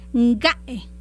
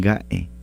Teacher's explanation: la K no se escucha, la K se escucha como G de gato